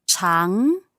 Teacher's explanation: second tone. Just going up.